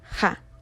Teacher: se vuelve fricativa dorsal sorda y es acompañada por una vocal central baja es decir la a lo que da como resultado final Ja